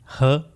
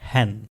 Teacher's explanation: इसमें vocal cords एक दूसरे के थोड़ा सा करीब आएंगे और वोकल कॉर्ड्स ओपन ही रहेंगे क्योंकि ये वॉइसलेस साउंड है। इन दोनों वोकल कॉर्ड्स के दरमियान से गले में से आपकी एयर फ्रिक्शन के साथ निकलेगी टू प्रोनाउंस ह साउंड, ह एज इन हैन। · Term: ग्लोटल साउंड